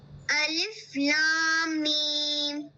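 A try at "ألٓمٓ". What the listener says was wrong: لام کو لمبا کیجیے.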